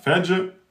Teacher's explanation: Le jim soukoun devient qalqala. Fajr. Le ra kasra est aminci.